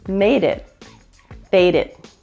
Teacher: The final T is pronounced with the stop consonant. In other words, it's not fully pronounced.